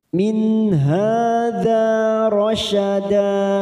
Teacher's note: nun sukun bertemu ha, idhar halqi, kita baca jelas tanpa mendengung